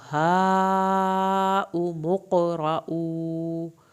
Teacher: ہاں ہم نے مد واجب کو 3 الف کے برابر کھینچا ، قاف کا یہاں قلقلہ ہوگا، را کو پر کریں گے،